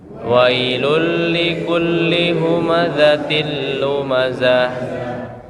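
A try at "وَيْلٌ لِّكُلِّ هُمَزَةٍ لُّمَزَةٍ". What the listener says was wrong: Zah. jangan saya terlalu pakai dada ditekan ini. Zah itu berlebihan. Tapi biasa aja. Zah. Seperti itu. Nah, huruf zai ini Bapak Ibu, dia ini di belakang gigi ya, di belakang gigi. Jangan sampai dikeluarkan. Kalau keluarkan nanti jadinya menyerupai huruf zal.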